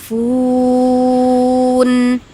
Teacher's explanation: fun itu Mad Ar sukun ya harus dipanjangkan kita pilih aja dua Alif ya dua Alif atau empat harakat